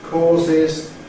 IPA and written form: ˈkɔːzɪz (causes)